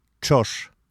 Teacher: Ч с двумя точками «ч» произносится как слитно произнесенные «т» и «ш» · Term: твердое «ч»